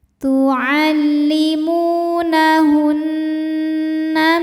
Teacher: Cara bacanya dengung. Bunyi N tahan sampai ada suara masuk hidung kurang lebih dua harakat. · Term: ghunnah musyaddadah